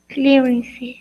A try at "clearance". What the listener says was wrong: Pronunciation for the last one, just 2 syllables. So clearance.